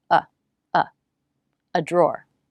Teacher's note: an indefinite article which we pronounce with the schwa